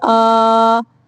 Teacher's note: اس مد کی لمبائی 6 سیکنڈ تک ہے